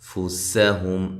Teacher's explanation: سین کو باریک سیٹی سے ادا کرنا ہے ، ہم ہا کو واضح نکالیں، میم ساکنہ کا یہاں اظہار